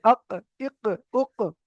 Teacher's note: একদম জিভের গোড়া থেকে উচ্চার, জিভের গোড়াটা উপরের সঙ্গে লাগছে।